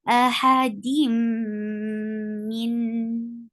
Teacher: Dim, idgham with gunna. You are merging sound of tanween into meme with gunna, like you are keeping the sound in your nose.